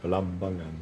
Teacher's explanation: you put the stress on the second syllable